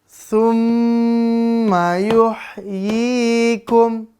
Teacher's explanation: Karena mim bertasydid. Maka dengungnya 2-3 harokat.